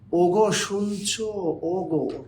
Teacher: কোনো শব্দ উচ্চারণ করতে গিয়ে ঠোঁট কি হয়, একটু গোল হয়ে আসে